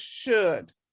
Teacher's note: The SH is sh, and then the D. The OU is a sound, but you don't pronounce that L. So it's just should.